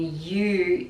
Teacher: you is /jə/ sound with schwa